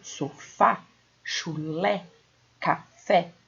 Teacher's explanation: Timbre aberto, som aberto. Então, quando aparece o acento agudo, o som é aberto.